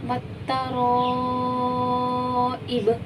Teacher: وقف کی صورت میں با ساکن ہو گیا تو یہاں پہ کلکلا ہوگا کیونکہ کلکلا والے حرفوں میں سے با آ رہا ہے اور وہ بھی ساکن.